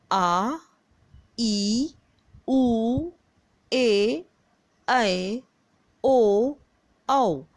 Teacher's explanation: इनके उच्चारण में ह्रस्व स्वर से 2 गुना समय अधिक लगता है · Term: दीर्घ स्वर